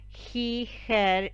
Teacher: Rioplatense Spanish speakers tend to use the voiceless velar fricative instead, which is the sound we use when we read the letter J.